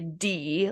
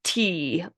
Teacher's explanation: a voiced stop would be a d like as in dad versus a voiceless one would be uh t like tadpole